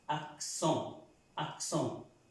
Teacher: este es un sonido nasal, esta E con esa N adquiere un sonido de una O, pero es una O nasal. Entonces esa palabra se pronuncia axón, axón.